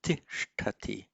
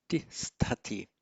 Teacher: where the s becomes a sh because of a preceding vowel, then a following t also becomes retroflexed